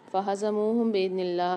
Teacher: اللہ کے لام کو باریک پڑھیں گے کہ اس سے پہلے زیر آ رہی ہے